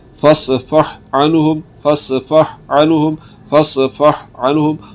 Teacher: ہا کو علیحدہ پڑھا جائے گا، عین کو علیحدہ پڑھا جائے گا، ان کا آپس میں ادغام نہیں ہوگا۔